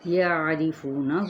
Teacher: عین کو ہم نے وسط خلق سے ادا کرنا ہے